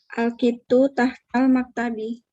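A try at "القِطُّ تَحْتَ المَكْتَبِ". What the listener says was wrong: Al-qittu tahtal maktabi. Jadi salahnya cuma di harakat.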